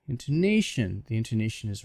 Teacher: when I say intonation, on the A, intonation, the intonation is rising and falling. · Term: word stress